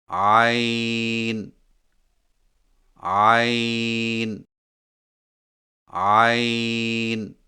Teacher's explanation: عین کی ادائیگی میں زبان کی جڑ کو حلق کی طرف مضبوطی سے دباتے ہوئے باریک اور رگڑ کھاتی آواز میں پڑھیں